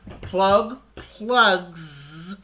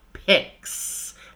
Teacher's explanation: S which is unvoiced picks right we have two picks right so plug plugs you add a Z because the gut is voiced at the end right pick is the sound that ends pick that's unvoiced so you add an unvoiced sound picks